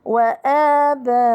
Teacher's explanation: المد الأول مد بدل، آباء مد بدل حركتان. آباؤكم مد متصل.